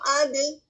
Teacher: اب جب میں کہہ رہی ہوں اد, تو کیا ہوا نکل رہی ہے اس میں سے؟ ہوا نہیں نکل رہی نا, اور آواز بھی رک رہی ہے. ٹھیک ہے, تو نہ تو اس میں رخاوا ہے, نہ اس میں ہمس ہے, بلکہ اس میں جہر ہے, آواز کی بلندی پائی جاتی ہے.